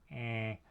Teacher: if I touch my voice box when I say eh, I can feel the vibration happening there. So this is a voiced sound